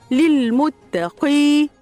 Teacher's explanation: ياء مد عارض للسكون جائز 2 أو 4 أو 6 حركات